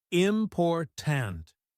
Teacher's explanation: in the word important, the stress is on the second syllable